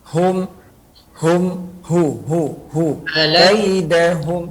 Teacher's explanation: Jadi huruf H jangan sampai masuk ke dalam hidung. H. Jadi awal mulanya itu walaupun dia dalam keadaan dhammah, kita memulanya itu dengan melebarkan.